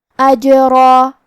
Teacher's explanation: اجرا، آخری میں را پہ تنوین زبر ہے، ہم یہ کلمہ پہ رکیں گے تو تنوین زبر پہ مد الف سے رکیں گے، تو کیونکہ حرف را کا حکم ہے تفخیم، لہذا ہمیں را کو اور اس کے بعد مد الف کو دونوں کو بھاری آواز میں پڑھنا ہے